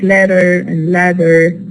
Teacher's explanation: The ta becomes a flap, or the da becomes a flap between two vowels.